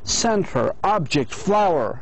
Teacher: we put the stress on the first syllable, like center, object, flower